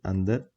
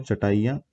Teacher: अनुस्वार में नाक से आवाज आती है और अनुनासिक यानी चंद्र बिंदु में नाक और मुंह दोनों से आवाज आती है